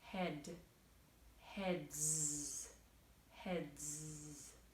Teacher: the letter D we need our voice so the s after the D sounds like head heads heads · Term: voiced consonant